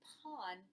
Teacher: the Thai word pan with the aspirated p